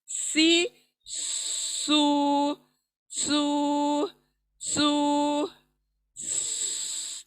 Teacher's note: फिर सीन की सीटी वाली आवाज, सीन सीटी वाली आवाज, इसकी आवाज, इस सीन की आवाज 3 डॉट्स वाले स की आवाज से मिलनी नहीं चाहिए।